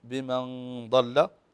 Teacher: النون الساكنه وبعدها حرف الضاد والضاد من حروف الاخفاء الحقيقي فهن هنا عندنا غنه بمقدار حركتين فنقول بمن ضل والكلمه الاخرى